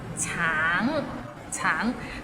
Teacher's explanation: Tang, it means orange, but some people might find it difficult because the end has a little ng, so it's a bit of nasal sound.